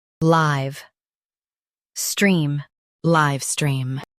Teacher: Stress live and keep stream smooth.